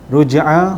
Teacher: huruf jim yang mati di tengah kalimah adalah qalqalah sughra. Lantunannya semasa dimatikan huruf jim itu adalah lantunan yang sedikit sahaja, tak tekan sangat macam qalqalah kubra, qalqalah sughra.